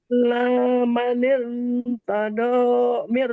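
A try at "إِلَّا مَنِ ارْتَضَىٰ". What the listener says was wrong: Nah, ini roknya harus dibaca tafkhim ya, karena namanya yang disebut bagian hukum rok namanya kasroh aridoh. Illa man irtada.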